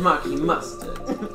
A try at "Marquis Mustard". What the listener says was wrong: It sounds like you're saying Marky Mustard, like Marky Mark.